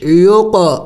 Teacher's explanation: دیا کہ حروف قلقلہ 5 ہے، قاف طا با جیم دال، تو قاف ہے اور ساکن ہے، قلقلہ کرنا ہے یعنی ہلا کے پڑھنا ہے